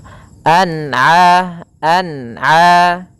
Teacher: harus dibaca dengan jelas tidak boleh dibaca dengan bacaan dengung